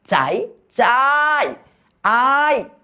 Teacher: আ টাকে কিন্তু আমি দীর্ঘ করে টানতে পারতেছি বাট ইটাকে কিন্তু আমি টানতে পারতেছি না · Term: অর্ধস্বর